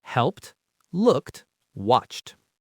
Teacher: For example, help ends with a P sound. So, in the past, it's helped. It sounds like there's a t at the end.